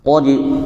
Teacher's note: tebal sekali manakala hurufnya itu harokatnya fathah